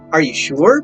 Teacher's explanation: question expressing great doubt or surprise has a falling rising intonation pattern